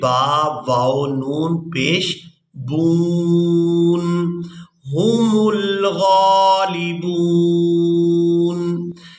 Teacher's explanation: وقف کی صورت میں ہم نے نون کو ساکن کر دینا ہے ، با کو واو ساکن اور نون ساکن کے ساتھ ملا